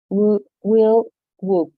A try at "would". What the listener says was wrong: Would. So be a little bit stronger with your D. Would.